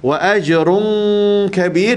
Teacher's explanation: dengung 2 harakat di sini, ikhfa hakiki